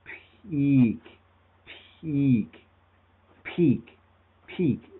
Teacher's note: there's it's very light and that's because basically your mouth op there's a slight delay and then you begin vibrating